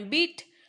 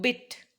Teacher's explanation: word pairs like beat and bit or peat and pit are distinguished by the first item having a long vowel and the second as a short vowel